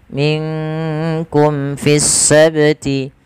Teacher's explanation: Kemudian pada lafal mim mati bertemu dengan fa, di sini ada bacaan yaitu izhar syafawi. Maka ketika kita membaca izhar syafawi, suara mimnya harus dijelaskan, tidak boleh ditahan. Minkum fis sabti, tidak boleh minkum ada penahanan, tidak.